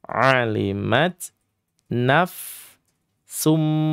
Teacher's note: silakan didengungkan atau dighunahkan sepanjang dua sampai dengan 3 harakat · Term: idgham bighunah